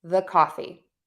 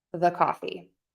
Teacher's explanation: I'm unstressing the, and then I am stressing coffee. So when I unstress something, it needs to be shorter.